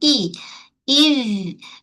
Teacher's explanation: Okey, hamzah makhraj dia pangkal kerongkong. E, ketatkan bunyi Hamzah dari pangkal ke kerongkong